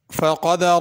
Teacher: قدرہ میں قاف پر ہوگا، بڑا قاف ہے، دال کے بعد جو را ہے وہ بھی پر ہوگی۔